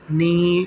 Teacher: میم نون زیر من، نون الف زبر نا، من نا، میم نون زیر من، نون یا زیر نی، دیکھیں نون یا زیر نی، حروف مدہ ہے، نی لمبا پڑھیں گے ایک الف کے یا الف مدہ کے برابر